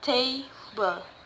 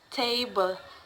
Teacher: There are 2 syllables in the t and bl, so the word stress put in the first syllable